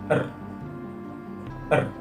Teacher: Dihasilkan dengan cara menggetarkan lidah atau mendekatkan dan menjauhkan lidah ke alveolum dengan cepat dan berulang-ulang sehingga udara bergetar. · Bunyi R termasuk ke dalam bunyi konsonan. Letak artikulasinya ialah pada apiko alveolar. Dihasilkan oleh ujung lidah sebagai artikulator dan lengkung kaki gigi sebagai titik artikulasi. Proses artikulasinya ialah dengan artikulasi getar.